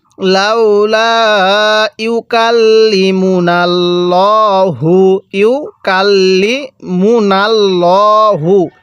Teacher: এই আল্লাহ শব্দের এই লামটাকে আমরা মোটা করে পড়বো